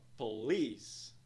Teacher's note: Dois sons de vogal, duas sílabas. Nós vemos um apóstrofe logo após a segunda sílaba, que indica que ela é mais alongada e pronunciada em um tom mais alto. A pronúncia da palavra é então police.